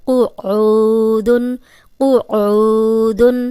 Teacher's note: یہ قوف موٹا ہے تو موٹا ہی پڑھیں گے، آگے عین پہ پیش اور جزم والی واو ہے، یہ واو مدہ ہے، اس کو 2 حرکات لمبا کریں گے، اور قوف کو موٹا پڑھیں گے۔